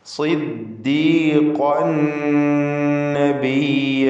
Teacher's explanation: ഖാഫ് ഇസ്തിഅലാഇൻ്റെ ഹർഫാണ്, പൂർണ്ണമായ തഫ്ഖീം